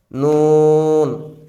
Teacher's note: নুন হচ্ছে জিহ্বা আগা তার বরাবর উপরের তালু